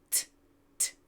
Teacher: the tip of our tongue is up behind our 2 front teeth. Again, we push air through, but there's no vocal cord. T, t. All right, that gives us our T sound.